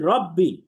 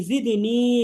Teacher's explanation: রব্বি এর মধ্যে কোনো টান দিব না, কিন্তু জিদনি এখানে একালিফ টান হবে।